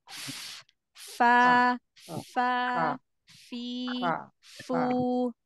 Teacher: Nah jadi ujung gigi seri atas ya ketemu dengan bibir bawah bagian dalam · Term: huruf Fa